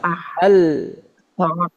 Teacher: ujung lidahnya tidak mengeluarkan suara maka suaranya keluar dari mana dari pinggir-pinggirnya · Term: lam